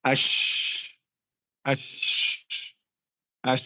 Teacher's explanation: menyibar angin saat mengucapkan huruf syin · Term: attafasyi